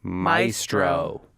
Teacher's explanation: it's the only common English AE word that only ever gets pronounced with that long I sound that diphthong